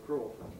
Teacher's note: most people seem to say crawford without pre-fortis clipping